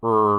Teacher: this er is articulated by raising the jaw and raising the tongue body as well as pursing and protruding the lips plus closing off the nasal passage and producing phonation in the